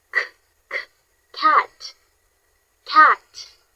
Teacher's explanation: The k sound is voiceless, meaning you can't feel any vibration in your throat.